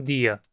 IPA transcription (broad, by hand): dia